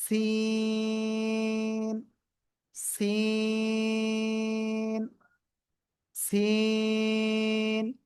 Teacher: সিন চার আলিফটা নিয়ে উচ্চারণ করব। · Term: সিন অক্ষর